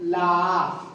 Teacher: और ला जीभ के दोनों ओर से हवा निकलेगी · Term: पार्श्विक